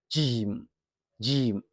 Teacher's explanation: For Jim, the sound is produced from the middle of the tongue as it rises toward the middle of the roof of the mouth. Keep your mouth relaxed and let the sound come out naturally.